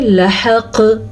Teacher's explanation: कलकला किया आपने क्योंकि कॉफ पे साकिन की वजह से कलकला पैदा हो गया